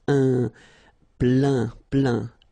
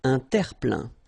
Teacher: So it goes in your nose and it's un plein, plein. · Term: nasal